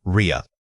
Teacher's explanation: rear requires you to pull the back of your tongue up into your throat area. This subtle shift in where the air vibrates changes the entire feel of the word.